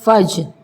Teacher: जीम पे भी हमारी आवाज़ पलट कर आएगी क्योंकि यह हरूफ कलकला का हर्फ है